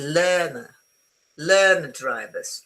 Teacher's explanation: this is standard British English, the R followed by a consonant, in order to get the two words together, I won't pronounce the R because it's too difficult.